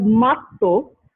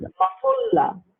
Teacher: Here, this is a lenition because a long consonant becoming a short consonant. So weakening rule.